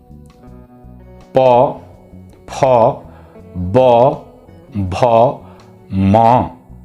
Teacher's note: जिन वर्णों के उच्चारण में ओठ की सहायता ली जाए, ओठ, उन्हें हम ओष्ठ्य वर्ण कहते हैं। जैसे उ, प वर्ग।